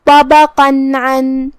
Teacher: کلمت عن میں یہاں حرف العین ہے، ہم اسے حلق کے درمیان والے حصے سے ادا کریں گے۔